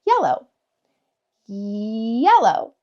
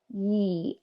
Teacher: it's just a very closed off, we don't want to extend it into an open vowel